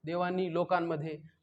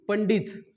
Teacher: अनुस्वार आहे पण असून नसल्यासारखा आहे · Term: ओझरता